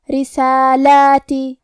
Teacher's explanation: کلمت رسالاتی را کے نیچے زیر ہے تو یہاں را کا حکم ہے ترقیق، ہمیں را کو پتلی آواز میں پڑھنا ہے